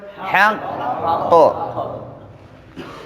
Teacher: حروف د قلقلې چې هم مشدد وي لکه تب، لکه بالحق، نو دا قلقلې اعلا ده، یعنی ډیره سخته ده، قوي ده